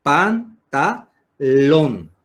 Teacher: Se carga la voz en la última sílaba.